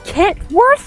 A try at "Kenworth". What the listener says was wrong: It's Ken. There's no T.